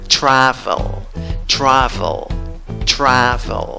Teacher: La sílaba amarilla, la que lleva la fuerza de voz. Tienes el sonido de una A que se ríe. Tira los labios para atrás, hacia las orejas, y dices A. En la segunda sílaba no tienes una E, tienes el sonido de la schwa, vocal neutra, la que no es ni A ni E ni O.